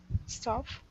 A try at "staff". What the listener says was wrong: Staff. It's actually staff, but a lot of people want to say either stuff or stove, you know, staff, but it's staff. Like, so it's like an A in apple. Apple, staff.